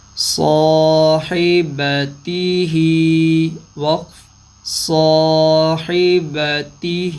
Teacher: کھڑی زیر پہ جب وقف کریں گے کھڑی زیر وقف میں ساکن ہو جائے گی